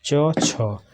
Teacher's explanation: तो जो च वर्ग है तालु से होता है